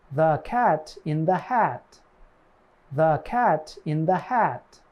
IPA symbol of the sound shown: æ